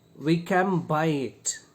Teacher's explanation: N becomes m. And this feature of sounds change in English is called assimilation.